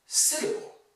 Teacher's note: the word syllable is stressed on the first syllable